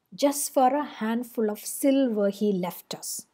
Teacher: First foot is dactylic, just is stressed, for a are both unstressed. Handful of, hand stressed, full of are both unstressed.